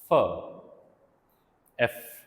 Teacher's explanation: yes, upper teeth and lower lip